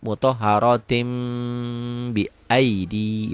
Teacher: Para ulama mempermudah mutahharatin, tinnya berubah menjadi mutahharatim bi aidi gitu. Kalau disambung, ini iklab ya.